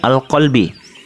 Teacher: Hukum bacanya adalah alif lam qamariyah, sebab alif lam bertemu huruf qaf. Cara membacanya huruf lam sukun dibaca jelas.